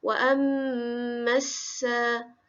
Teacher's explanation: kita baca dia bersambung, masuk terus bunyi ma ke dalam sin